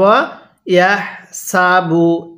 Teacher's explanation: এই হাগুলো উচ্চারণের সময় মুখ দিয়ে হালকা বাতাস বের করতে হবে।